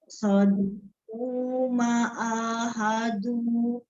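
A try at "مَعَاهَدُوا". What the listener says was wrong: Ma'ahadu. Nah, berarti Umi nadanya yang dirubah. Kalau Umi nada berhenti, Umi pasti ada hamzah. Mau 10 kali tetap ada hamzahnya. Jadi nadanya nada sambung saja. Ma'ahadu. Ma'ahadu.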